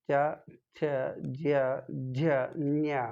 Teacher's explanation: ಸೊ ಅದನ್ನು ತಾಲುವ್ಯ ಅಂತ ಕರೀತಾರೆ. ಬಹುಶಃ ನಮ್ಮ ನಾಲಿಗೆ ಆ ತಾಲುವ್ಯಕ್ಕೆ ಬಡಿಯೋದ್ರಿಂದ ಈ ಅಕ್ಷರಗಳು ಹುಡ್ತಾವೆ